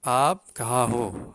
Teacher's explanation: Dalam bahasa Urdu, up, mestilah alif itu dipanjangkan sedikit.